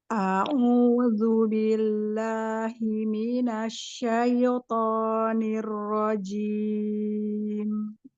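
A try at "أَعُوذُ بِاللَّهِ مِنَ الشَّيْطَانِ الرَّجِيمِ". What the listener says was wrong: Ya, ainnya, masih masuk hidung. Lagi.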